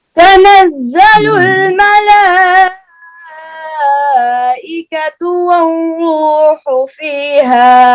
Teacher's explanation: मलाइका के ऊपर ये जो मद है ना, ये लाजमी मद है, इसको मद्दे वाजिब कहते हैं, इसको छोड़ना नहीं है। जी, 3 लंबा करना है।